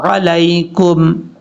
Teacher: عین کو حمزہ کی آواز میں نہیں پڑھنا